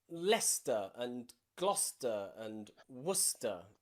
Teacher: nearly all of these you have a c in them that is completely silent